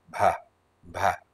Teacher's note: this is soft consonant, it's reverberating in your throat